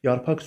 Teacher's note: Yarpaq sözü q ilə yazılır, x kimi tələffüz olunur, doğrudur.